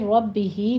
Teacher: را کو مفخم پڑھتے ہوئے آگے با کی تشدید ادا کریں گے، با کے نیچے کسرہ ہے، باریک لے جائیں آواز